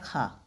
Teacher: खा स्पर्श व्यंजन भी है, कंठस्थ से बोला जाता है। अघोष है ये, क्योंकि अघोष में क्या होता है, अघोष में दूसरा और चौथा अघोष होता है ना, पहला, तीसरा और पांचवा सघोष होते हैं।